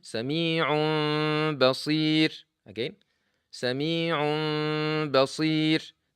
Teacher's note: The sound is not coming from the mouth. The sound is coming from the nose. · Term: غنة